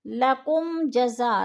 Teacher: لکم جزا، لکم پہ اظہار شفوی ہے، جزا پہ مد متصل ہے، 4 الفی مد ہے